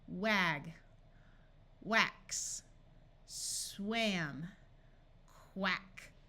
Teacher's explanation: where the a has the short sound after a w instead of the broad a sound